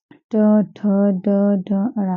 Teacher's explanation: हमारे तालों के आगे का थोड़ा सा हिस्सा जहां पे हमारी जीभ टकराती है वो मूर्धन्य कहलाती है। इस वजह से इन्हें मूर्ध ऊंचाई देने वाले व्यंजन कहते हैं।